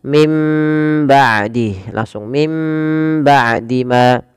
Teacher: suara nunnya dimasukkan ke huruf ba atau dibalikkan sehingga terdengar dengan suara huruf mim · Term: hukum iqlab